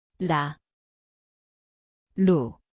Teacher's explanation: 리을, এটি ওয়েল এর মতো শোনায়। স্থান হল জিভের টিপ হালকা টোকা।